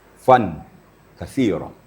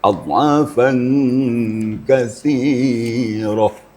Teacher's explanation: Menyembunyikan bunyi nun mati atau tanwin ke dalam huruf yang kaf tadi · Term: ikhfa hakiki